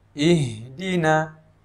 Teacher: huruf H ini juga merupakan huruf yang mengalirnya suara dan juga mengalirnya nafas